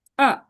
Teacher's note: 4 নম্বর টোনকে falling tone বলে, এটা falling ভাবে নিচে এরকম,